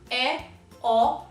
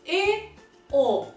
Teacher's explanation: Como eu acabei de pronunciar, E, O, um som mais aberto, um som mais agudo, ou E, O, um som mais fechado, mais grave.